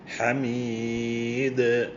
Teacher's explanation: ഹാ എന്ന് പറയുന്നത് ഹുറൂഫി ഹലക്ക് തൊണ്ടയിൽ നിന്ന് പുറപ്പെടുന്ന ആറ് അക്ഷരങ്ങളിൽ ഒന്നാണ്